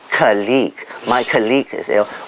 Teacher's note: practically 80% of Singaporeans will put the stress on the second syllable, so they say colleague, my colleague is ill, which is incorrect.